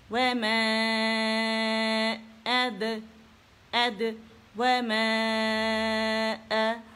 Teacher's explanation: ये हमजा कता है तो अपने से पहले आवाज़ को काट देता है तो हमने इसे वाजे तौर पे इसे निकालना है, ठीक है।